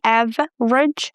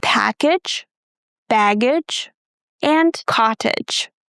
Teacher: We pronounce age, again with the schwa sound, plus j.